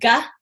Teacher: it is the soft palate meeting the back of the tongue. In Sanskrit, we call it a guttural sound.